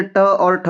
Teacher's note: Then मूर्धन्य ध्वनि भाई ट वर्ग के जितने भी ये ट वर्ग के सारे व्यंजन हैं। ट वर्ग के सारे ही मुर्धन्य होते हैं